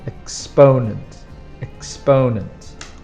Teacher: you put the strong sound on the second syllable